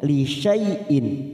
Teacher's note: Nun sukun atau tanwin bertemu dengan hamzah namanya bacaan idhar halqi. Kita baca jelas tanpa mendengung.